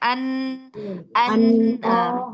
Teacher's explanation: Ujung lidah bertemu dengan gusi atas. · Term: nun